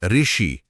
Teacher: लेकिन आज की बोलचाल में आधुनिक युग में इसका उच्चारण पूरी तरह बदल चुका है। आज हम इसे व्यंजन र और स्वर ई को मिलाकर ऋ की तरह बोलते हैं। जैसे ऋषि बोलना हो तो ध्वनि र से शुरू होती है।